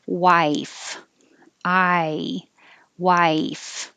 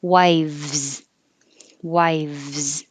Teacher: you have top teeth on bottom lip, same position, but now you have voicing, so it makes it a V